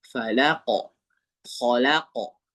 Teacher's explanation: Qalqala qofnya dia condongnya ke o ya. Falaqo khalaqo condong ya bukan o bulat. · Kalau qofnya dia condongnya ke o ya.